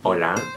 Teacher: Uh, in Spanish it's hola and uh it's spelled H O L A and H in Spanish it's a silent sound so you don't um pronounce it and uh you just say the vowel after that.